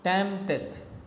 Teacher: a troche in which the first one is stressed the second one is unstressed